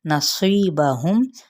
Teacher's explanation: نصیبہم، صی پہ مد صلیب الیا کا قاعدہ، صاد پر پڑھا جائے گا، میم پہ وقف بالسکون اور اس کو اظہار شفوی بھی کہا جاتا ہے